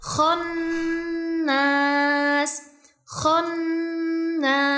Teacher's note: huruf nun yang bertasydid yang disertai gunah dua sampai 3 harakat. Jadi bacanya khonnas.